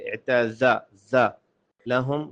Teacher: عین کو واضح کریں ساتھ میں اور زا سٹی کی آواز نکالیں